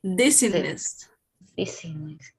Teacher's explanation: Making stress in the first I, dizziness.